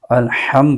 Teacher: حا کو حلق کے درمیانی حصے سے ادا کرنا ہے، اس کے مخرج سے ادا کرنا ہے اور درست ادا کرنا ہے۔